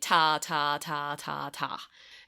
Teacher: And try to remove the vowel and just say t, t, t, t, t. And notice how that your voice doesn't move at all. Like the vibrations stop when you make the t sound.